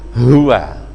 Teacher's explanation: Huwa itu hanya itu memang dari dada. Tempat makhraj keluarnya huruf H itu dada.